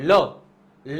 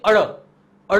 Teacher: બંને બાજુથી હવા નીકળે એટલે કે જેમ કે તમે બોલો લ લ બોલશો ને તો જીભની બંને બાજુથી હવા નીકળશે · એના પછી નેક્સ્ટ આવે છે પાશ્વિક વર્ણ એટલે કે ઉચ્ચારણ વખતે જીભની બંને બાજુથી હવા નીકળે